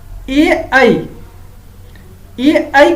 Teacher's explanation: ए ऐ का उच्चारण स्थान क्या होता है? कंठ तालु